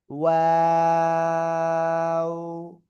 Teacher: দুই ঠোঁট শুরুতে গোল হবে, মাঝখানে দুই দিকে প্রসারিত হবে, শেষে এসে আবার গোল হবে।